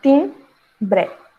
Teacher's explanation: Timbre, tem um dígrafo IM, que é quando existe a nasalização. Então, esse M, ele vai trazer uma nasalização na pronúncia da palavra